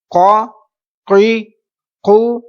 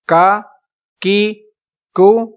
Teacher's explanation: اب یہ حروف مستعلیہ کا قاف تھا اس لیے ہم نے پر پڑھا. اب یہ جو کاف ہے یہ باریک آواز میں پڑھا جائے گا